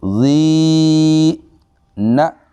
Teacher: جی next دیکھتے ہیں جی، ہم نے اس کو پڑھنا ہے، اس میں لام مشدد ہے، پہلا بھی اور پھر دوسرا بھی لام مشدد ہے، ٹھیک ہے جی، ان دونوں کو ہم نے پڑھنا ہے، ال لل ل زی، یہاں پہ یا مدہ ہے، یا ساکن، اس سے پہلے زیر ہے، زی 1 الف کے برابر لمبا کر کے زال کو پڑھیں گے